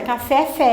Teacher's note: fé é mais forte, está na última sílaba, então ela é oxítona, mas ela é acentuada e ela tem uma razão para isso.